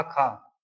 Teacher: क वर्ग जो हमारे कंठ से उत्पन्न होता है। कंठ ध्वनियां होती हैं।